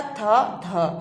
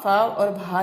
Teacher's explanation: इन वर्णों के उच्चारण में मुख से ज्यादा हवा निकलती है। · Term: महाप्राण